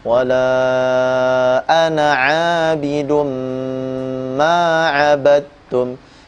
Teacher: tulisan ana dalam Al-Qur'an dibaca pendek